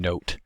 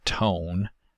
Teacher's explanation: velum lowering for coda nasals occurs early during the preceding vowel, which adds a feature of nasalization to those vowels. That can be transcribed with a tilde diacritic above the vowel. · That can be transcribed with a tilde diacritic above the vowel. So there's a difference in vowel quality between note and tone, where in tone the vowel is nasalized